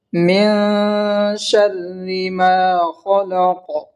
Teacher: نون ساکن میں گنہ کریں گے اس لیے کہ اخفا ہوگا۔ نون ساکن کے بعد حروف اخفا کے 15 حرف میں سے شین آیا ہے، اس لیے حروف اخفا ہے، اس لیے اخفا کا قاعدہ ہوگا یہاں پہ۔